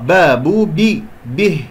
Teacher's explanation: وأقف على ها ساكنة باهتزاز الأوتار